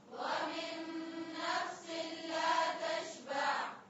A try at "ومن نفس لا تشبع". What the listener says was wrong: ومن نفس کس طرح پڑھیں گے؟ نہیں، ملا کے پڑھیں. نون کی آواز کو چھپائیں نہیں. ومن نفس لا تشبع.